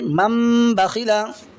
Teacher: गुन्ना के साथ पढ़ेंगे और नून को मीम से बदल कर पढ़ेंगे · नून साकिन के बाद में बा होगा तो इक़लाब होगा और नून की आवाज़ की जगह मीम पढ़ेंगे। यानी अब मीम को नून से नहीं बल्कि इस मीम से मिलाएंगे।